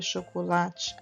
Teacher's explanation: na palavra chocolate a sílaba mais forte é o lá esta é a sílaba tônica as outras o te o coco